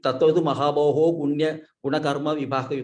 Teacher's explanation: because of the Visarga Lopa, Visarga has been elided, they call it, it will be lost because of the Sandhi here.